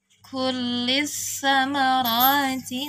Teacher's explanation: Ini dengan sa, ujung lidah kitanya disentuhkan ke gigi seri atas. Kullis samarati, ro-nya 2 harokat ditandai dengan fathah berdiri atau jabar nangtung.